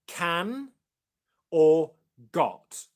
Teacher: The sound is the same tongue position as the k and g sounds, as in can or got. The back of the tongue comes up and touches the back of the mouth.